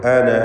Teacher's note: വഖഫിൽ മാത്രമാണ് ആ അലിഫ് ഉണ്ടാവുക എന്നതാണ് അതിൻ്റെ സൂചന. വഖഫ് ചെയ്യുമ്പോൾ അന എന്ന് 2 ഹറക്കത്തിൻ്റെ അളവിലുള്ള ദീർഘം നൽകണം